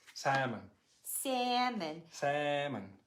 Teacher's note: Should we hear this L sound? Not at all. No, not at all. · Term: silent L